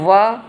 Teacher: सातवां है व, दंत और ओष्ठ, ये व दंत और ओष्ठ से निकलता है, इसलिए इसको दंतोष्ठ कहते हैं।